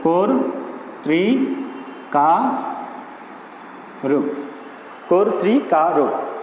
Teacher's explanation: শব্দের আদ্য অয়ের পরে রিকার থাকলে সে অয়ের উচ্চারণ হবে ও এর মতো।